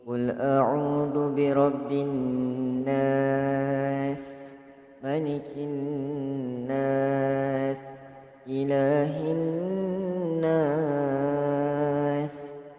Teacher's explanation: Nun syaddah mestilah ditekan pada gusi atas, kemudian suara ditolak ke pangkal hidung.